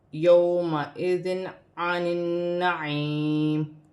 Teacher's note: 2 زیر کی تنوین میں غنہ نہیں کیا جائے گا کیونکہ آگے حروف حلقی میں سے عین آ رہا ہے تو تنوین میں غنہ نہیں کیا جاتا۔